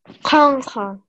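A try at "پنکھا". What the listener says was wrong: So there's that slight nasal sound. Yeah, that noon sound is there, but you're not actually pressing down on it.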